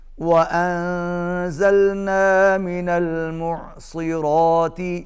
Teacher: عین کو حلق سے ادا کیجئے، را کو پر پڑھیے